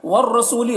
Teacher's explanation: را کو پر پڑھنا ہے، سو میں واو مدہ ہے، 1 الف کے برابر کھینچیں گے